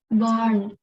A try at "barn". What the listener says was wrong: Kurang dalam sedikit. Pengen American karena dia baca R-nya.